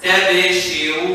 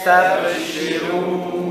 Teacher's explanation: So you will have sin that is long, ba that is very short, noon that is in between.